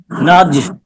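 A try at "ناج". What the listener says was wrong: আবার আপনার কলকলা কম হয়, সাফওয়ানে কত সুন্দর কলকলা হয়, এরকম ধাক্কা দিবেন, ধাক্কা। নাজ। নাজ না, জো জো এরকম একটা আওয়াজ আসবে, নাজ।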